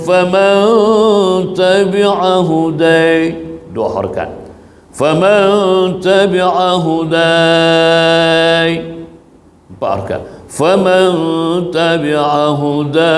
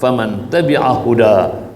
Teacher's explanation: Kalau kita nak wakaf itu, kalimah hudai itu kena baca dengan hukum ma'arid lisukun. Sama ada 2 harakat, sama ada 4 harakat, sama ada 6 harakat.